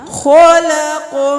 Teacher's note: خو بھی موٹا، قاف بھی موٹا، قاف کی آواز دوبارہ پلٹ کے واپس آئے گی، خلق، حلق نہیں کرنا، خلق من شر ما خلق، من شر ما خلق۔